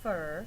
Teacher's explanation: fur gets more emphasis it's said just a little bit harder than the rest of the word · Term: stress syllable